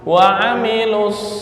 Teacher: makhrajnya bukan di bibir, tapi di lidah. Bibir hanya mengikuti.